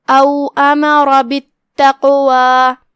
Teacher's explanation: پہلا تو تفخیم لہذا ہم قاف کو بھاری آواز میں پڑھیں گے اور دوسرا جو کہ اس پہ جزم ہے تو یہاں حکم ہوا قلقلہ جو کہ اس کا معنی ہے حرف کو ہلانا لہذا ہم قاف کو ہلاتے ہوئے یہ کلمہ ادا کریں گے. آخری میں یہاں مد طبیعی ہے تو ہم اپنی آواز 2 مد کے برابر کھینچیں گے.